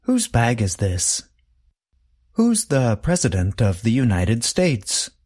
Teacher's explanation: The contraction and the possessive adjective both sound the same. They are both pronounced with the sound of the letter Z at the end.